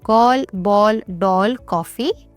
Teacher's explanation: अंग्रेजी के जो शब्द हैं उनका उच्चारण हिंदी में आगत यानी औ ध्वनि के रूप में किया जाता है। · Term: आगत ध्वनियों